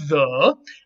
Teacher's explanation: all you have to do is make the same sound and turn on your vocal chords and you're going to get the voiced fricative